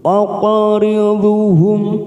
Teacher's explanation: Lalu ada huruf qaf sukun, kita pantulkan namanya qalqalah sugro. · Mim sukun bertemu dal, idhar safawi, kita baca jelas